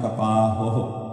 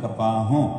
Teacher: ਇੱਕ ਹਾਹਾ ਲੈ ਕੇ ਦੂਸਰੇ ਹਾਹੇ ਨੂੰ ਹੋ ਜਿਹੜਾ ਕਹਿਣਾ, ਉਹਨੂੰ ਹੋੜਾ ਤੇ ਬਿੰਦੀ ਦੇ ਰੂਪ ਦੇ ਵਿੱਚ ਨਾਸਕੀ ਉਚਾਰਨ ਕਰ ਲੈਂਦੇ ਹਾਂ, ਕਪਾਹੋਂ। ਤੱਗ ਕਪਾਹੋਂ ਕੱਤੀ ਹੈ, ਬਾਹਮਣ ਵੱਟੇ ਆਏ, ਪੰਡਤ ਜੀ ਆ ਗਏ, ਉਹਨਾਂ ਨੇ ਕਪਾਹ ਤੋਂ ਇਹਨੂੰ ਆ ਕੇ ਵੱਟ ਚੜਾ ਦਿੱਤੇ।